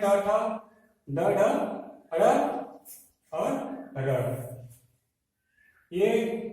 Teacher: ट वर्ग में ट ठ ड ढ ड़ और र। मूर्धन्य से उच्चारित होने वाले वर्ण हैं।